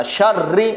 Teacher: را میں سختی پیدا کریں گے کیونکہ تشدید ہے